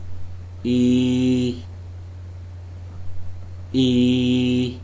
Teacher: the front of the tongue is raised to a height slightly below and behind the closed front position the leaves are spread the tongue is tense with the side